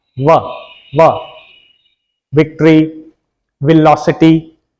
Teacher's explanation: फिर एक आ गया विक्ट्री वाला, इसको बोला जाएगा व, नीचे वाला होंठ और ऊपर वाले दांत